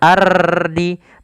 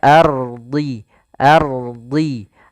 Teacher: ro-nya tebal tapi dia satu kali saja